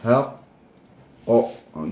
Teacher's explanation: sebab dia ada syaddah, maka kita akan tahan dan melantun qalqalah itu sampai kadar 2 harakat